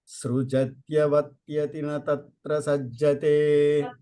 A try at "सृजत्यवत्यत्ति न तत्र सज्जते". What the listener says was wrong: त्यक्ति double त सृजत्यवत्यत्ति